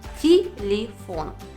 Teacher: А это значит, что О остается О. Первые 2 гласные Е оказались без ударения. Но слышим мы не звук Е, а звук И в обоих слогах.